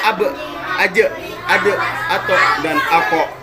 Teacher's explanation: yang di akhir itu bunyinya seperti bunyi hamzah sukun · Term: qalqalah